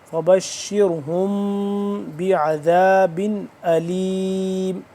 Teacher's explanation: میم یہاں پہ ساکن ہو رہا ہے اور اس کے بعد با ہے تو یہاں پہ ہم اخفاء لازمی کریں گے